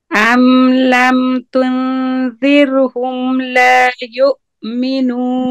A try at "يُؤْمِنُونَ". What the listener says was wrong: يُؤْمِنُونَ. Get rid of the gunna from wow. Not noon. Would you block your nose in the wow and try to say it? يؤمنون.